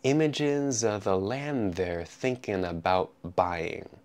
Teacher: when I say land the D disappears and the N connects to the th